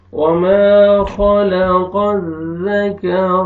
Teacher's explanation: را کو موٹا کر کے پڑھیں گے۔